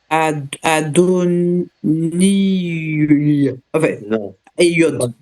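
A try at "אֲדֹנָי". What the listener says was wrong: On a dit que le yod ne se prononce pas. Adoni. Parce qu'il n'y a rien en dessous. Adoni.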